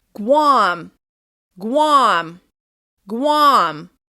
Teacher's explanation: Guam is one syllable, but it will still be stressed. You need to make the vowel sound longer, louder, and higher in pitch.